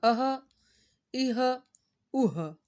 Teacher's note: یہ ہا حلق کے نیچے والے حصے سے ادا ہو رہا ہے